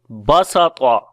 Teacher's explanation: some Arabs make the letter Seen in these verbs heavy, right? Because it is near the close elevated letter ta, or which is also called isti'la letter.